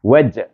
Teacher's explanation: Di sini jim mati. Jim huruf kakalah. Wajah tu kena kakalah sugro.